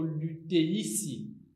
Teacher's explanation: Le epsilon, quand il s'allonge, devient EI.